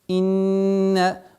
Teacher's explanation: удержание назализации в размере двух огласовок